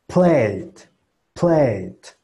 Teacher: el sonido que tenemos que sacar va a ser el sonido de la I, pero con nuestra boca en modo E